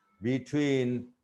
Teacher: Between two syllables, be and twin, the second syllable receives stress.